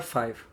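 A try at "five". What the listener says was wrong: Not 5. 5 with a V. No V. No F. It's a V.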